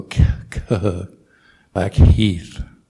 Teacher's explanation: k h as in black heath so you do have to pronounce the h